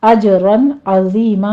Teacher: آگے عین کو وسط حلق سے ادا کرنا ہے